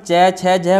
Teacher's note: इनका उच्चारण जिह्वा का मध्य भाग तालु से स्पर्श, ठीक है, तालु के स्पर्श से होता है, तो इन्हें क्या बोलते हैं हम तालु से।